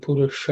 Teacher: the sha here is a cerebral sha. So the tip of the tongue has to point upwards.